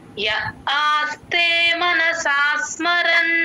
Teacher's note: మనసా అని చిన్నగా ఎక్కువ డ్రాగ్ చేస్తే మళ్ళీ స కింద సొత్తు అవుతుంది చిన్నగా తీసుకోవాలి మనసా స్మరన్ సరిపోతుంది య ఆస్తే మనసాస్మరన్ [ప్రశంస] య ఆస్తే మనసాస్మరన్ య